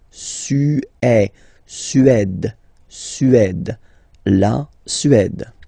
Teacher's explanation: Remember, accent grave, it's really open.